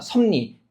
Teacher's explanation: 비읍이 뭐로? 미음으로. 비음으로 바뀌었죠. 그 다음에 리을이 또 뭐로 바뀌었어요? 니은으로, 비음으로 바뀌었죠. 그래서 이렇게 비음 아니었던 게 비음으로 바뀌면 무슨 화라고 얘기하고, 비음화라고 얘기를 하고, 그 다음에 개별 현상은 그런데 변동의 유형면에서 본다면 소리와 소리가 1대1로 바뀌는 거라는 거죠.